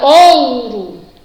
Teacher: O O é uma vogal e o U aparece aí como semivogal, tá bom? Então, eu tenho um ditongo.